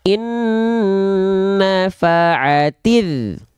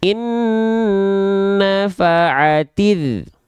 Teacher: nggak boleh diseret-seret, nggak boleh dipanjang-panjangkan huruf taknya. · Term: alif lam syamsiah